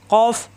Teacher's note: কফ জিহ্বার গোড়া থেকে